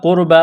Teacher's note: قاف کو موٹا کرنا ہے، را ساکن سے پہلے پیش ہے، را کو موٹا کریں گے، با کو ایک الف کے برابر کھینچنا ہے۔